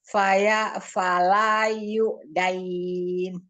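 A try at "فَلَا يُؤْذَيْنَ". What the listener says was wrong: Bukan dain, tapi zain. Zazi, zuza, zain.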